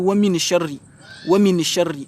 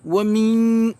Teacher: vous devriez dissimuler les noun. On ne va pas entendre les noun. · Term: ikhfa